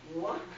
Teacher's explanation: if you put your hand in front of your face and go wah, you should feel some air come out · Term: windy sounds